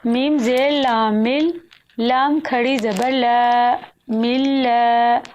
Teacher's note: لفظ اللہ جلالہ کی لام پر شد ہے، اس لیے لام پر سختی کی جائے گی، اور کھڑی زبر ہے جو کہ 2 حرکت کے برابر کھینچ کر پڑھیں گے۔ لفظ اللہ جلالہ پر شد ہونے کی وجہ سے میم کو لام میں مدغم کریں گے، یعنی میم کو لام کے ساتھ ملائیں گے۔